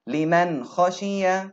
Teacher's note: Noon is followed by a kha, which is one of the throat letters here, and we make the Noon clear